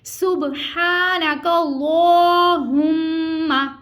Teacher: کیسے ہم غنہ کسے کہتے ہیں ناک میں آواز لے جانے کو غنہ کہتے ہیں اور ایک الف کی مقدار کے برابر اس کو کھینچ کے ادا کرتے ہیں